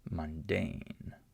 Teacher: I still have this short U sound, but it's not stressed in the word. So it's not the syllable that has the most sound, right?